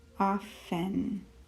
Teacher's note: We do not make the sound of the T in that word.